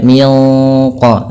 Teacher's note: suara nunnya ya disamarkan langsung kepada makhraj daripada huruf q · ketika kita melafalkan juga ikhfa yang kepada huruf qaf itu ditebalkan menyesuaikan dengan sifat huruf qafnya yang tebal maka tidak baca Min qoblihim tapi dia Min qo langsung seakan-akan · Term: Ikhfa Hakiki